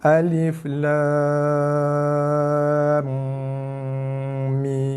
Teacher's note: jaga dengung mesti 2 harakat, tutup mulut, bibir diketap, dikacipkan